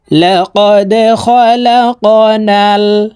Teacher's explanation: এই দাল কলকলার হরফ নিচের দিকে ধাবিত করে ধাক্কা দিয়ে উচ্চারণ করতে হবে।